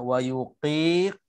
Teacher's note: Cuma bab makhraj tadi kena sebut juga wayuqi, itu qaf tebal. Tebal sikit untuk supaya tak bertukar dengan huruf kaf.